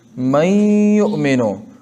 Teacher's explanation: اور یہ غنہ مثل نون مشدد کے بڑھا کر پڑھا جاتا ہے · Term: ادغام مع الغنہ